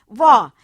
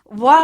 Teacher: जो नीचे का होठ है वो ऊपर की दंत पंक्तियों को छूता है और इससे जो ध्वनि निकलती है उसे हम वा कहते हैं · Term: दंते ओष्ठ